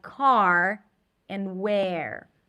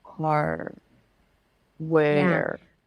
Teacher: And when the R is after a vowel, make sure that the vowel is clean, that you're not lifting the tongue up for the R, but you are pronouncing the vowel clearly, and only then you're bringing the tongue up for the R, like car and where.